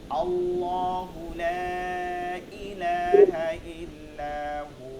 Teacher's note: আল্লাহ শব্দটা মোটা করতে হবে